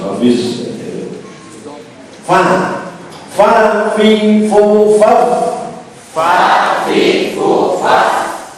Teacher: Jadi fa ini bibir bawah yang bagian dalam. Kalau kita rapatkan tidak kelihatan, ditempelkan ujung gigi atas. Fa. Jadi bibirnya tidak usah masuk, pokoknya akan ke atas.